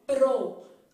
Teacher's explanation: letras ó vamos de novo P que é uma con bilabial R que é uma consoante vibrante então eu falo pro Observe que sua língua deu um treino